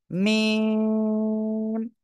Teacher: মিম অক্ষরটা আমরা উচ্চারণ করব দুই ঠোঁটের শুকনো জায়গা থেকে। মিম, চার লিপ টান হবে।